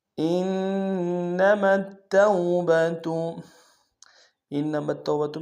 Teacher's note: واو لین بغیر کھینچے پڑیں گے